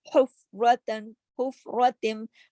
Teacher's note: حلوے والی ہا جو ہے وہ حلق سے پڑی جائے گی